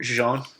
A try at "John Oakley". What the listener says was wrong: John Oakley. Not Jean Oakley. John Oakley.